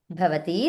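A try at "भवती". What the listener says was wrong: అదే భవతికి దీర్ఘం అనలేదు చెప్పాలి దీర్ఘం చెప్పాలి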